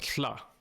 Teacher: That double L-O-Y-D, that double L in Welsh is a lla, right? It's what's called a lateral fricative. It's like if an F and an L had a baby, right?